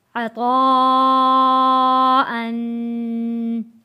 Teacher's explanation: عین زبر ع، طا الف مد زبر طا، عطا، حمزہ دو زبر ان، عطاءن۔ بڑا مد چار الف کے برابر، اس کو کھینچ کر ہم نے پڑھا ہے